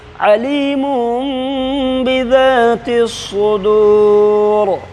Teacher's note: دو پیش کی تنوین کو میم سے بدل کر کے اخفا کے ساتھ پڑھیں گے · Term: اقلاب